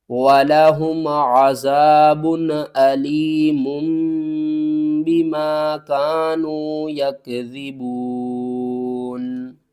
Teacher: تنوین کی آواز کو میم کی آواز میں بدل دیا